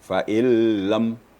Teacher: dalam bacaan nun itu tidak kedengaran